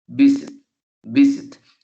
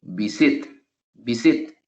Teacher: si pronunciamos el verbo visit, visit, el acento, la fuerza la tiene en la primera sílaba